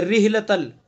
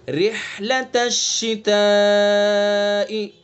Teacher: رحلتل، ریح یہ چھوٹی ہاں بن گئی، لہنے جلی غلطی ہو جائے گی، اس لیے ہاں کو حلق کے بیچ سے ادا کریں گے